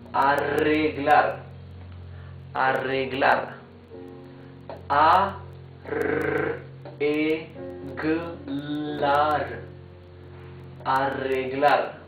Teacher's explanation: when the R is doubled in the middle of a word, it's the same rough sound as the R at the beginning of the word.